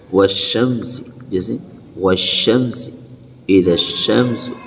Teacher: الف اور لام کسی کو بھی نہیں پڑھیں گے، سیدھا شین کے اندر تشدید یعنی ملا کر پڑھیں گے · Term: حروف شمسی